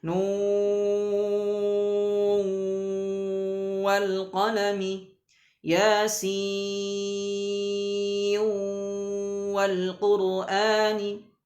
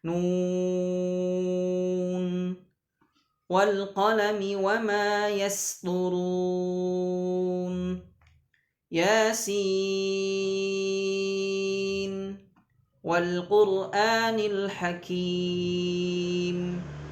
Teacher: tidak boleh diidghamkan, dimasukkan, tapi tetap dibaca idhar, mau dibaca ketika wasal ataupun diwaqafkan ya, tidak boleh dimasukkan ya, walaupun setelahnya dia bertemu dua waw kan di situ ya. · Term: idhar mutlak